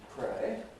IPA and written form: preɪ (pray)